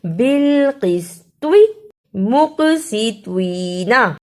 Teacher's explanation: اسے بالقسطی اور مقسطین نہیں پڑھنا، دونوں طوا کو صحیح ادا کرنا ہے. طوا کی جگہ پر تا کی آواز نہیں آنی چاہیے